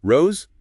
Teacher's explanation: Spanish O is a pure O.